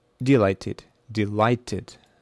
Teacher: So the second syllable is stressed.